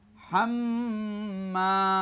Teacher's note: হায়ে ফাতা মিমে তাসদিদ ডবল পড়তে হবে। হাম্মা, মিমে ফাতা বামে খালি হলে পেকালিপ টান হবে।